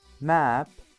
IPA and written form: mæp (map)